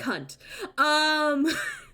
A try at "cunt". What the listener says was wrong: love how you pronounce the T. It's not a cunt. It's cunt.